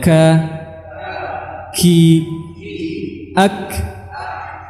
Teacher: huruf kaf yang keluar dari pangkal lidah